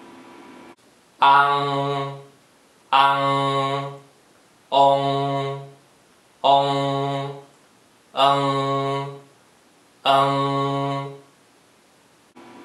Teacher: As you pronounce them, do not change the shape formed by your lips, and do not move your chin as you make each single sound. Each of these symbols has a very strong nasal sound at the end, made by lifting the back of your tongue up to the roof of your mouth. The nasal sound is formed in the back part of your nose.